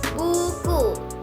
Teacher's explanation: lidah di belakang dan tinggi seperti bunyi u pada kata buku